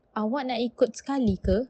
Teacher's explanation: uses rising pitch to ask politely, just like English